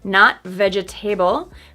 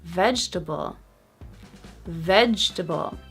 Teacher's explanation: Vegetable. So that first syllable is so strong, it makes the second syllable disappear.